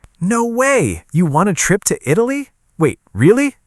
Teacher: with a high, excited voice, I know you are surprised and interested.